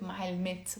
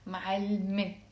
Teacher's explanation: It has a T مربوطة that's silent. Silent T. So we write it معلمت, but we don't pronounce it معلمت.